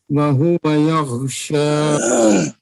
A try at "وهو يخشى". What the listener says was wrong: خا کو صاف کریں